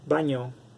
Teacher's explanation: Yod segunda porque tiene un cambio de una ñ. La ñ es un sonido palatal.